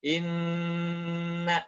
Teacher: tahan dulu di rongga hidung, ya, kadarnya dua harokat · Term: mana berwarna tahan